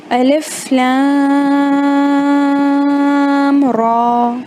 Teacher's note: یہاں پر را کو نہیں کھینچنا ہے، صرف لام کو